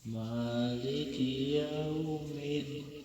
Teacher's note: huruf lin karena waw sukun sebelumnya fathah, maka dibaca cukup dilembutkan, tapi bibir kita ngumpul ya, sama seperti mobil waw.